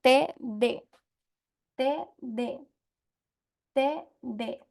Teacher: la lengua choca la parte posterior de los dientes superiores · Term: dentales